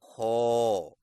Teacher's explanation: खौ की अदायगी में ज़ुबान की जड़ को तालू की तरफ बुलंद करें, यानी खौ। मश्क कीजिए: खौ, खौ, खौ, खौ, खौ, खौ, खौ, खौ, खौ, खौ, खौ, खौ।